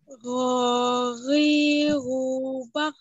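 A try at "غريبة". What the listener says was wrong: Yang berharokatnya udah bagus, tinggal yang sukunnya aja. Itu huruf kho ya, huruf kho itu ada tenggorokan atas, tadi lidahnya agak naik, agak nempel ya.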